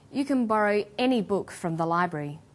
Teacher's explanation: when the word any is stressed this tells us that we're talking about an unrestricted quantity or unlimited choice